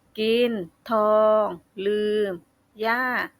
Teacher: ระดับเสียงประมาณปานกลางมีระดับเสียงคงที่ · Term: เสียงสามัญ